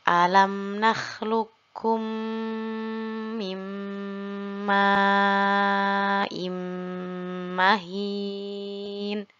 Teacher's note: di sini yang diidghamkan adalah pada huruf qaf yang berharokat sukun lalu ada huruf kaf setelahnya